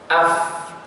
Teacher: Bila kita matikan huruf fa, kita akan dengar angin tu terlepas. Af. Kena letak sikit Af. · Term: hams